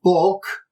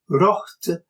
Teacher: the O of bok, meaning book, is long, while the O of rocht, meaning wrought or made, is short